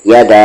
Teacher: مد کے سمبل کے بعد حمزہ ہے تو اسے ہم 3 سے 4 حرکت کے ایکول کھینچیں گے